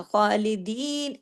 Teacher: تو اب اس میں دیکھیے کہ تمام حروف، خا کے اوپر کھڑی زبر ہے تو وہ الف کے برابر کھینچے گا، لام کے نیچے زیر ہے وہ صرف ایک حرکت پڑا جائے گا، 2 حرکات نہیں پڑا جائے گا۔ خالدین، اب دی کو 2 حرکت کھینچیں گے یا کی وجہ سے، لیکن نون کو صرف ایک حرکت ہی کھینچا جائے گا، کیونکہ کھینچنے کے لیے مد ہے ہی نہیں، اس کے اوپر صرف ایک زبر ہے، نون زبر نہ۔